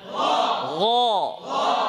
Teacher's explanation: غين موتا করে غ আওয়াজের গতি উপরের দিকে غ আবার বলতে থাকেন জোরে সবাই গ আবার ফাতহা উচ্চারণে দাঁতের পাটি পৃথক করতে হবে, তাই না?